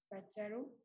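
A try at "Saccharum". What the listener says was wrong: Si ves, se escribe Sacharum, pero se pronuncia Sacarum.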